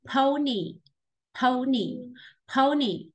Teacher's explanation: Cái từ này là âm ớ ù, không phải là pon nhá. Mình không đọc là pony đấy.